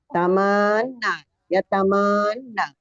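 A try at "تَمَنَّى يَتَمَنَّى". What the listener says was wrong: Mudhari belum betul. Mudhari ujungnya doma.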